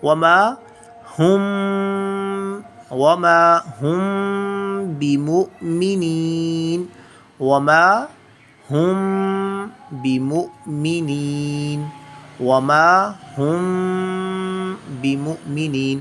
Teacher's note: we hide the sound of meme in our nose, and we recite it, prolong it, pull the sound of ikhfa from 2 to 3 seconds